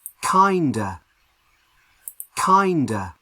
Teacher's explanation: so the strongest sound is on the first syllable